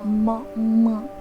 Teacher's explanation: तो इसका उच्चारण हमें मुख में जो म का उच्चारण स्थान है उससे करना है और नासिका से भी करना है। तो मुख में म इस वर्ण का उच्चारण स्थान दोनों ओष्ठ है, यानी कि होठ है, और इसे हमें नाक से भी उच्चारित करना है कुछ इस प्रकार म। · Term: अनुनासिक वर्ण